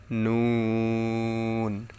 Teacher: জিহ্বার আগা তার বরবার উপরে তালুর সঙ্গে লাগে